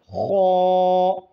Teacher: हलक के मुंह के जानिब वाले हिस्से से खौ अदा होते हैं। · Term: खौ का मखरज